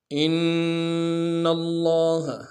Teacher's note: حمزہ کو نون ساکن کے سامنے لائیں گے، نون ساکن میں غنہ کریں گے اور نون کو آگے لام کے سامنے لانا ہے، تشدید بھی